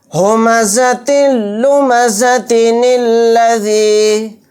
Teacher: پھر یہاں پر دیکھیے یا مدہ ہے، یعنی ذال یا زیر ذی کو 1 الف کی مقدار کھینچیں گے، زیادہ نہیں کھینچیں گے۔